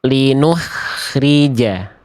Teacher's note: yang B kurang tepat karena khnya tadi ada senyum jadi kayak bunyinya tipis